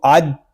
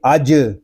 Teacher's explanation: حمزہ جیم زبر اج، حمزہ کو جیم کے ساتھ ملائیں گے، جیم ساکن ہے اس میں قلقلہ ہوگا، اس کو اج اس طرح نہیں پڑھیں گے، اس کو پڑھیں گے اج۔